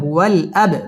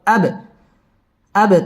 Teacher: বা কলকলার হরফ ধাক্কা দিয়ে পড়তে হবে